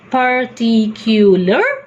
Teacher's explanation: the word particular, T will always be told with extra breath force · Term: aspiration